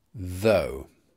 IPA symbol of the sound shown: ðəʊ